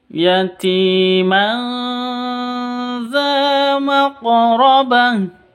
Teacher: Ini tanwin bertemu dengan zal. Samar didengungkan. Ti panjang 2 ketuk.